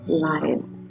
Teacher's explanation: o is becoming the reduced sound here which is called as schwa